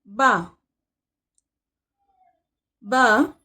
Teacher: दोनों होठों के जुड़ने से अदा होता है · با دونوں ہونٹوں کے جڑنے سے ادا ہوتا ہے